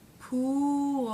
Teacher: The oo as in boo vowel has the tongue tip forward. Pool. So the tongue has to pull back a little bit.